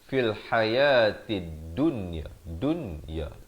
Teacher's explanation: walaupun nun mati bertemu ya ataupun nun mati bertemu waw, maka dia tetap bunyi jelas, bunyi izhar. Nama hukumnya izhar mutlak.